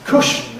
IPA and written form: ˈkʊʃn̩ (cushion)